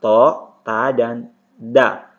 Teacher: tepatnya di ujung lidah, bertemu dengan gigi seri atas